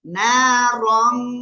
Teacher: তানউইনের পরে ইকফার অক্ষর তা আসছে, এজন্য আমরা নাকের ভিতরে নিয়ে গুণনা করব